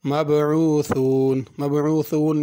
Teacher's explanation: مبعوثون میں ثا ہے، اس کو سین یا صاد کر کے نہیں پڑھنا